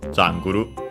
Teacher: accented luckily on the first syllable as expected